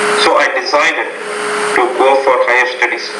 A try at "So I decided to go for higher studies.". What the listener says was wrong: To go for. So pronounce the O longer. To go, O.